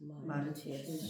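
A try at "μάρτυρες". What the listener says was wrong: 저 입술을 바라봐야 돼. 그래야 제대로 발음할 수가 있어요. 저 입술. 마르튀레스. 튀자가 위자입니다. 마르튀레스.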